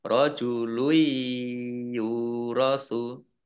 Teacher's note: Domah tanwin bertemu dengan huruf iya, idgham bi gunnah masuk dengan mendengung yaitu mendengung ya.